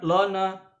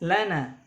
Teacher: Lana, lana, bukan lona, la, dibaca tipis, lana.